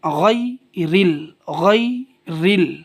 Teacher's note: اب یہاں ریل ریل نہیں پڑھیں گے، را موٹا نہیں کریں کیونکہ را کے نیچے زیر ہے، اس لیے را بالکل باریک پڑھیں گے